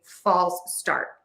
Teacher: To say this word correctly, you are going to stress false and then start is going to be unstressed. So the vowel in falls needs to be really true and that is a really wide open oval shape for that vowel. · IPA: /ˌfɔls ˈstɑrt/